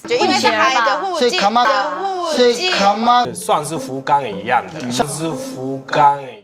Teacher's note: they often use the consonant of hu to replace the f sound when speaking Mandarin. The consonant of hu is pronounced by using your two lips as if you're blowing out the flame of a candle.